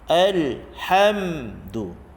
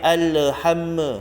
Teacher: Jadi huruf mim atau tanda mati ni izharkan sahaja. Jelaskan tanpa dengung, tanpa qalqalah. Alhamdu. Tak boleh alhamma.